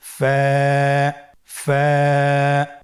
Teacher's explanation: ফায়ের মাখরাজ হলো নিচের ঠোঁটের প্যাড সামনের উপরের দুই দাঁতের আগার সঙ্গে লাগিয়ে উচ্চারিত হয়।